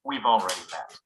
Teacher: when it comes after a pronoun have often loses its vowel sound altogether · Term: weak pronunciation of have